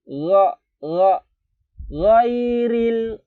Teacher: Kita baru ketemu ghain, ra. Jadi mau ke huruf G itu tapi agak nggak nyampai. Samar dia. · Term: huruf ghain